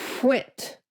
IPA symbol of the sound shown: kw